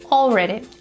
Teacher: The sound L is a dark L.